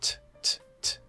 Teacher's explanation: If I talk about the T sound, so we know the T comes up and closes. There's a little bit of flatness. We're not touching the teeth. And we release t, t, t.